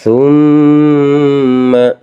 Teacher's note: Kalau mim bertasjid makanya dinamakan hukum bacaan hunnaah. Cara bacanya ya pasti ditekan teman-teman ya. Ditekan selama dua ketukan saja.